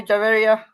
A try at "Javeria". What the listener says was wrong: Okay, it is Javeria. J is not silent. Javeria.